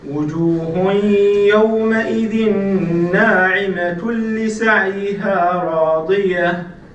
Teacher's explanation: If we continue, we have tanween, and if we continue, then it's going to be idgham bidun ghunna, because followed after the tanween we have lam, which is part of the letters of idgham bidun ghunna.